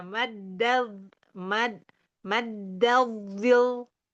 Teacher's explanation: Dia enggak enggak kayak bilang Allah karena dia enggak tebal kayak lam.